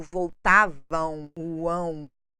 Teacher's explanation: o som do M final nasal formando um ditongo decrescente ou do M Inicial bilabial Não se preocupem tanto com esses